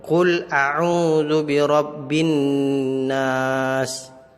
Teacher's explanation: Ya, ada nun mati, nun tasydid di situ. Jadi nunnya dibaca dengung.